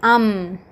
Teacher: the lips meet each other and they do not separate